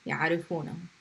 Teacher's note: So we take hum, يعرفونه. Pronounce the noon with a fatha and just add a hu to the end.